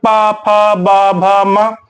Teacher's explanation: ओष्ठ से उच्चारण होगा। का मतलब हमारे दोनों ओठ जो है आपस में स्पर्श करते हैं